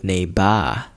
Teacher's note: Arnold can't pronounce the R in neighbor correctly, which is just a small matter of Arnold's thick Austrian accent